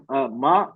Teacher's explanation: मीम जबर माँ, एक हरकत है, दो हरकत खींचना है हमें।